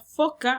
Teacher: el labio inferior va a tocar con los dientes superiores de la boca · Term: labios dentales